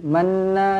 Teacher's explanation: Nun sabdu wajibul ghunah okey dengungkan dua harakat kemudian na na dua harakat lagi asli amanna Billah lafzul jalalah